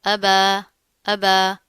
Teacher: کھڑا زبر آ رہا ہے، ایک الف کے برابر پڑھا جائے گا